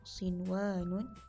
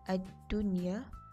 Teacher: antum perlu menyebutkan huruf nun mati dengan jelas tanpa berdengung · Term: izhar mutlak